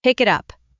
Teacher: The final sound of pick connects to it and the final sound of it connects to up. >> So it may sound more like one unit than three separate words.